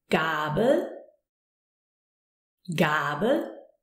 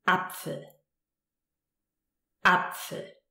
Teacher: We have a long A, as in Gabel, Gabel, and a short one as in Apfel, Apfel.